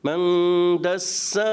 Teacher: اب ہا اور دسا دونوں کا جو ہے ایک ہی ہے یعنی وہ بھی الف مدہ ہے وہ بھی الف مدہ ہے. ایک الف کھینچنا ہے دونوں کی مقدار ایک جیسی ہونی چاہیے